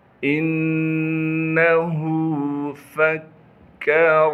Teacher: ہا پر الٹا پیش ہونے کی وجہ سے ہا کو ایک الف کے مقدار کھینچیں گے۔ انہ فکر، فا کو باریک کر کے پڑھیں گے